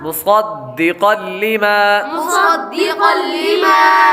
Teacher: آگے قاف قاف حروف مستعلیہ میں سے ہے اس لیے اس کو پر پڑھیں گے. آگے قاف پر تنوین ہے, تنوین کے بعد لام حروف یرملون میں سے آ رہا ہے اس لیے غنہ نہیں کریں گے.